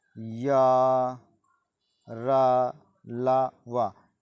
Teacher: जिन व्यंजन वर्णों के उच्चारण में जीभ मुख के किसी भाग को ना स्पर्श करे उन्हें अंतस्थ व्यंजन करते हैं।